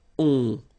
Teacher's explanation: Remember, you don't pronounce the final s, you get the on sound. Okay? Nasal in your nose, on.